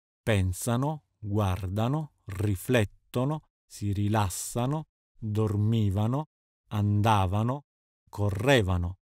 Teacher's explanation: talvolta creano confusione anche le parole sdrucciole ovvero quello in cui l'accento cade sulla terza sillaba contando sempre dalla fine